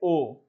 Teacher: आ बनता है भाई कंठ से, उ बनता है ओष्ठ से, और दोनों को मिला के बनाओगे तो ओ बनेगा, तो क्या हो जाएगा, कंठोष्ठ हो जाएगा, कंठोष्ठ, ठीक है।